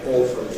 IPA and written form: ˈɔːfəli (awfully)